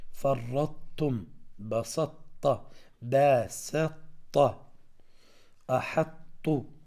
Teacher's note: والأخير الطاء مع التاء، فرطتم، بسطت، باسطت، أحط. فتبقى صفة مثلا هنا الإطباق بالنسبة للطاء والاستعلاء على حرف التاء، وتصبح مشددة كأنه إدغام ناقص